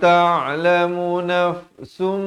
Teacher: Daripada nafsun asalnya izhar, tapi bila datang mim jadi idgham bi gunnah.